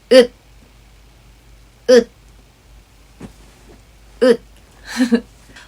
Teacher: Your tongue is flat when you start to pronounce it. The sound stops by your tongue moving up to the roof of your mouth and closing the gap where the sound comes out. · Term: final consonant 디귿